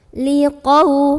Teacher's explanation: Qau ada huruf lin karena ada waw sukun sebelumnya fathah, bacanya cukup dilembutkan.